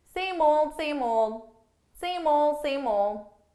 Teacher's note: I'm actually saying same old, but notice for pronunciation, I'm really just dropping those D's.